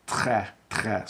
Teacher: I have trouble rolling my R's. I tend to say très, très, so I make a ch sound instead of a true R roll